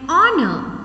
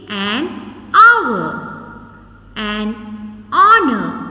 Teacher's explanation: when we are pronouncing these words in these words h is silent so because of that we are pronouncing these words with the vowel sound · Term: silent h